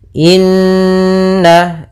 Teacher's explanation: Inna, ada bacaan gunnah, yaitu kita panjangkan 2 harokat suaranya karena di sini gunnah ya, ada nun bertasydid